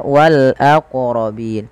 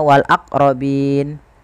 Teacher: Qalqalah yaitu bacaan memantul, sehingga dalam melafalkan wal aqrabin ini wajib memantulkan